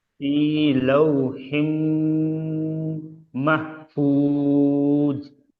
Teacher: দেখেন ওয়াও সাকিন ডান আয় দিকে জাবার ওয়াও লিন, নরম আওয়াজে তাড়াতাড়ি পড়তে হবে